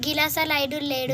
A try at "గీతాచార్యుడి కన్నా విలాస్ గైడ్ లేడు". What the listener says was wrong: గిలాస కాదు, విలాస. గీతాచార్యుడి కన్నా విలాస్ గైడ్ లేడు.